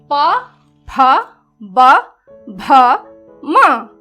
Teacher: इन ध्वनियों का उच्चारण दोनों होठों से किया जाता है। ऊपर का होठ है बच्चों, ये नीचे का है, तो ये दोनों आपस में जुड़ते हैं और जुड़ने के बाद हवा कुछ देर के लिए बाधित होती है और उसके बाद जब मुंह खोलते हैं हम तो ये ध्वनियां उत्पन्न होती हैं। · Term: द्वयस्थ ध्वनि